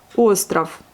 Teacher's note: Mais le V à la fin devient un F, puisqu'il est précédé par la voyelle.